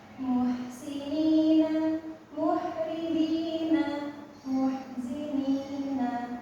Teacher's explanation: untuk H itu adanya di tengah tenggorokan.